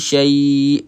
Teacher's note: syai berhenti dengan kita matikan huruf hamzah. Ha matikan hamzah.